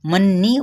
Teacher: मीम साकिन के बाद बा आ गया तो यहाँ पे इफ़ाई शफवी का कायदा आ गया। मन्नी गुन्ना करते हुए ज़ेर के साथ अदा करेंगे